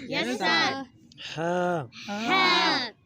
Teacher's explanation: یہ ہا جو ہے نا حلق سے نکالنا ہے